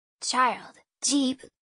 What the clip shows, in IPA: tʃ ; dʒ